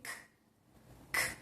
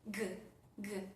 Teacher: ¿Cuál es la diferencia con Ka? Que Ga es un sonido voiced, nos produce una vibración en las cuerdas vocales.